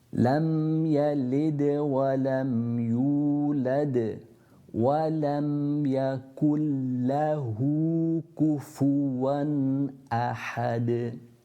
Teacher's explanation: at the end of the verse again, you have the qalqala or the echo of the dal when you're ending on it.